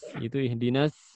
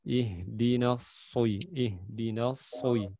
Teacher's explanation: Adapun shod terangkat lidahnya bagian belakang.